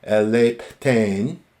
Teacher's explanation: that pi has been aspirated because of the theta aspiration